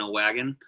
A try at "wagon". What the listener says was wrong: It's an E, not an A.